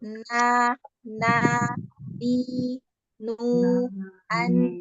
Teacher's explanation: Jadi kalau pengucapan nun itu na, ni, nu, an. Jadi memang kita menggunakan al-khaisum ya kan? Karena kita di situ ada gunnah ya, ada dengungnya ya.